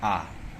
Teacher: मुंह खोल करके जो पढ़ा जाता है वो विवृत स्वर है